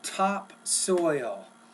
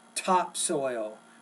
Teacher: You need to produce that T and the P, topsoil with more air.